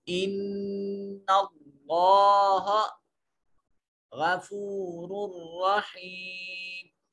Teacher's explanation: इन्ना नून मुशद्दद है, गुन्ना वाजिब होगा, और कलमा इसमें जलालत का माकबल मफ्तू है तो इसमें जलालत के लाम को मोटा और पुर करके पढ़ा जाएगा। इसके ऊपर अलिफ अलमदिया सगीरा है, एक अलिफ के बराबर, इसको लंबा करेंगे, इसको पढ़ेंगे।